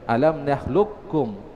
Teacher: kalau kita baca dengan idgham kamil maka qafnya di situ seluruhnya masuk pada huruf kaf. Ya, seluruhnya masuk ke huruf kaf dalam artian kaf yang terbaca.